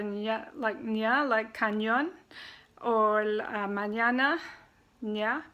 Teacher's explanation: It's an N with a tilde on the top, and it sounds just like N and Y together, ña, like cañón, or mañana, ña. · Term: ñe